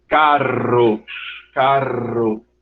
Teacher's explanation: se você pronunciar isso que a língua vai lá para frente toca nos alvéolos e vai vibrar · é quando a língua toca nos alvéolos e vai produzir uma série de oclusões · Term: alvéola, vibrantes